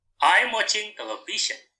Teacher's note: So the intonation is falling. It is for positive sentence.